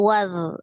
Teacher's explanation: zal adalah salah satu huruf roghah ya, dialirkan. Jadi ketika dia sukun tidak dipantulkan, tapi dialirkan.